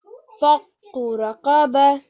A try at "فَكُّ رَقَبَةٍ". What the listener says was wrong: Bah. Try and make that h sound at the end.